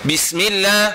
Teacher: Jangan ditebalkan eh. Jangan ditebal. Biasa nipis saja. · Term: huruf sin